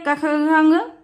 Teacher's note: कंठ व्यंजन पहली लाइन आपकी का वर्ग जो होती है कंठ व्यंजन होती है